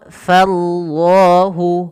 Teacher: Pada lafal Allahnya di sini dibaca dengan lam tafkhim.